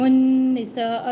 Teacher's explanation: نون شدید غنہ مد متصل تین الف کے برابر لمبا کرے